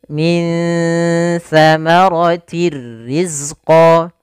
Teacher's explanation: yang kasratain dimasukkan ke huruf r tapi tidak boleh ditahan maka dia langsung masuk Nah di sini kita namakan dengan Idgham bila ghunah idgham masuk · ditandai dengan nun sukun bertemu dengan huruf tsa yaitu cara membacanya samarkan nunnya kepada makhraj daripada huruf tsa makhraj tsa adalah ujung lidah menempel dengan Gigi Sari kita maka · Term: Ikhfa, ikhfa